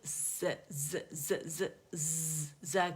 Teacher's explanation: اچھا شروع میں اس کو تھوڑا سا ایگزیجریشن کے ساتھ میں نے آپ کو بتا رہی ہوں کہ میں پہلے جب آواز نکال رہی ہوں تو آپ کو سنوا بھی رہی ہوں، ورنہ یہ ڈائریکٹ سین کی طرح پڑھا جاتا ہے. ٹھیک ہے، ز جو ہے بزنگ ساؤنڈ رکھتا ہے